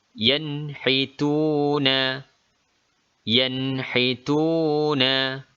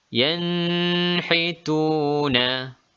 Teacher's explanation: huruf Izhar make ini dinamakan hukum izhar halqi Bagaimana cara membacanya Nun dibunyikan secara jelas dan cepat tanpa ada dengung yen retune yen hituna Bacaan yang dibaca secara dingo adalah salah